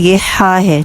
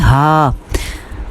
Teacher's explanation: بالکل گلے کے سینٹر سے اس کو نکالیں گے، ایسے سختی سی ہے اس کی آواز میں